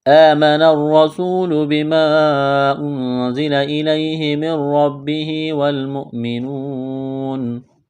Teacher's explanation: واو مدہ ہے، ایک الف کے برابر کھینچنا ہے